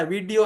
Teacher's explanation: एक बिंदी जो ड के नीचे लिखते हैं तो वो ड अगर बिंदी नहीं है तो ड वीडियो देख रहा था वीडियो ऐसे हम नहीं बोलते वी में इकार आ गया और इ के बाद में अगर ड आया तो हम ड को सॉफ्ट बना देते हैं हिंदी में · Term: सॉफ्ट वर्जन